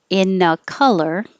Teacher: the n and the a will connect